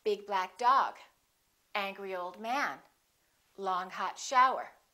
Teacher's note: we emphasize the first adjective and the noun.